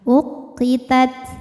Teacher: Nah tadi sama seperti yang atas, ta ini secara suara sifatnya syiddah, kuat, secara angin hamas, anginnya keluar. Nah ta sukun itu anginnya keluar terakhir